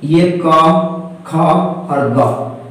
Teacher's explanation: जिह्वा मूलीय ध्वनियां, देखिए जिह्वा जिसे हम जीभ कहते हैं, जीभ के भी कई भाग होते हैं, अग्रभाग, पश्चभाग और मध्य भाग। तो कुछ ऐसे भी ध्वनि है जिनका उच्चारण जीभ के मूल यानी जड़ वाले भाग से उत्पन्न होता है